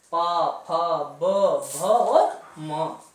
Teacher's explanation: ओष्ठ व्यंजन कहा जाता है जब हमारे दोनों होठ आपस में टकराते हैं